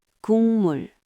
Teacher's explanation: that g final consonant before a m becomes ng, so it sounds like 국물.